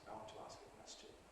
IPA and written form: aɪ ˈwɒnt tu ˈɑːsk ə ˈkwesʧn̩ (I want to ask a question)